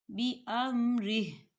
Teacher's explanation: وقف کی صورت میں ہا کے نیچے جو کھڑی حرکات ہے اسے اب نہیں پڑھا جائے گا، ہا جو ہے وہ ساکن ہو جائے گا